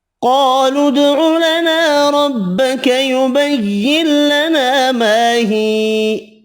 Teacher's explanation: قالوا ادع لنا ربك يبين لنا ما هي، قاف حروف مستعلیہ پر پڑھیں گے، دال ساکن پر قلقلہ کرنا ہے، الف مدہ ایک الف کی مقدار میں کھینچ کر پڑھیں گے۔